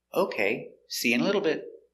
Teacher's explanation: it's a positive idea intonation goes down at the end